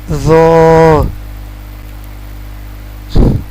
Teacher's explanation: زو کو بہت سے لوگ زوا پڑھتے ہیں، لیکن اس کو زو پڑھیں گے۔ زو کا آواز زبان کی نوک یعنی زبان کا اگلا حصہ اوپر والے دانتوں کی اندرونی کنارے سے ادا ہوگا